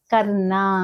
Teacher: సరైన ఉచ్చారణ విధానం అంటే కర్ణ అంటే నాలుకను వెనక్కి మడిచి అనాని పలికే ముందు చిన్నగా ర అనే శబ్దాన్ని స్పృశించాలన్నమాట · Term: రే ప